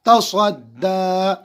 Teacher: صاد پر منہ بھر کے پڑھیں گے